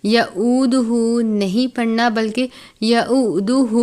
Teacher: ولا یؤدہ، یہاں پر یا ہے، اس کے بعد واو کے ساتھ حمزہ اور جزم ایک ساتھ ہیں، یعنی حمزہ ساکنہ ہے، جھٹکا دے کر پڑھیں گے۔ یعودہ نہیں پڑھنا بلکہ یعودہ، الٹا پیش ہے۔